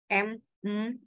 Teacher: bilabial itu adalah dua bibir bibir atas bibir bawah jadi untuk membunyikan bunyi mim m m ya itu tuh bibir